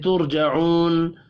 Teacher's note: را ساکن سے پچھلے حرف کے اوپر پیش ہے، را کو پر پڑھیں گے، جعو واو مدہ ہے 1 الف کے برابر کھینچ کر پڑھنا ہے، وقف کی صورت میں نون ساکن پڑھا جائے گا۔